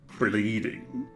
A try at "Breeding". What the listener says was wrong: Breeding. You need to roll the R's.